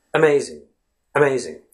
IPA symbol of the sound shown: ə